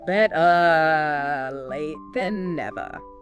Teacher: in standard British English, we don't really pronounce that R sound at the end